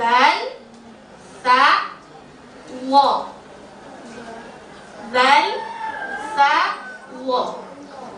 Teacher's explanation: Ujung lisan dikeluarkan sedikit dan ditekan di ujung gigi seri bagian atas. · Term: Makhraj lisan